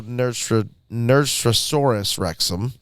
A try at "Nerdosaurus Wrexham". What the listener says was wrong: Nerdosaurus Wrexham is my guess. You said Nerdstrasaurus. You're putting you're putting in Nostradamus. You're putting the straw in there, and it's not. It's just nerd.